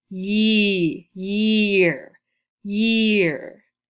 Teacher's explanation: So you hear the long E sound, the long E sound. You hear no A sound in there, just a long E.